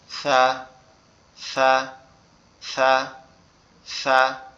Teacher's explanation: আমাদের জিহ্বার আগা সামনের দুই দাঁতের আগার সঙ্গে লাগবে, লেগে নরম সুরে হালকা করে আওয়াজ হবে সা, সা, সা, সা, এভাবে।